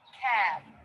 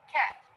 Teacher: Another thing that can affect vowel length is the ending consonant. If everything else is the same and the ending consonant is voiced, then that vowel will be a little bit longer than if the ending consonant is unvoiced. So, for example, the word cat will be a little bit shorter than the word cab.